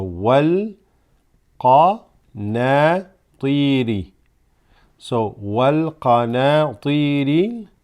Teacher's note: this hamzatul wasl is going to drop, going to go straight to the lam here.